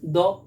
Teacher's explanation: আরেকটা লিখেছি দেখুন, হ্রদ থেকে দহ থেকে দ, আমরা সচরাচর উচ্চারণ করি দ, তাহলে অ্যাকচুয়ালি শব্দটা হ্রদ, তাহলে হ উঠে গেল, শেষে এসে দাঁড়িয়েছে শুধু দ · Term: হলোপ